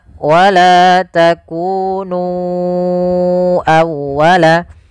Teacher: Kemudian pada lafal nu awwalaka ya di sini sama hukumnya dengan lafal bima anzaltu yaitu adanya mad jaiz munfasil. Maka kita harus memanjangkan nunnya sepanjang empat atau lima harakat.